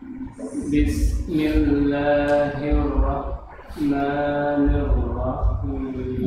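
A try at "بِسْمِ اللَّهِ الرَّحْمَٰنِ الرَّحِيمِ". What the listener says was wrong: Ya, sinnya kurang, Pak. Ayo, bismillahi.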